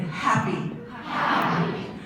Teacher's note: the H, strongly aspirated